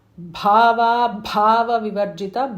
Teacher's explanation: Bhava Bhava Vivarjita, both Bhas are Mahapranas.